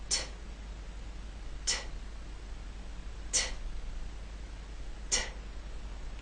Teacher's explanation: tongue and that hard bump behind your Upper Front Teeth second when you release the air there should be a puff of air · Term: true T